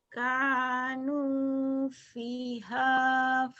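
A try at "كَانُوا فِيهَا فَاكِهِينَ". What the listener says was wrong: finya panjang. Kanu fiha fakihina.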